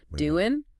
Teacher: final G in doing gets softened or dropped too especially in really relaxed speech